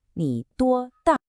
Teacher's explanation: The question is all packed into the words themselves, in 多大. So the sentence actually ends with a definitive fall.